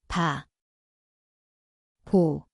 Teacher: 비읍, Se kuulostaa BLTää. Paikka on molemmat huulet.